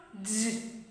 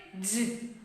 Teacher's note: Front of the tongue raised towards the hard palate. By the way, it is voiced palato-alveolar.